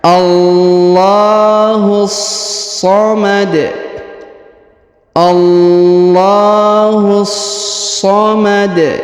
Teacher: Allahu, huruf hu langsung disambung masuk ke huruf so yang berharokat tasdid. Ini namanya alif lam syamsiyah, ditahan dan ditekan.